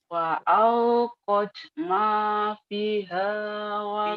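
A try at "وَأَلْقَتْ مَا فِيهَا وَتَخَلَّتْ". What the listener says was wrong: Pi-nya panjang. Ma piha sama panjang. Wa alqat ma fiha wa takhallat.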